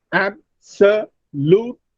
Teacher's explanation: in these 4 syllables, the primary stress is on the first syllable.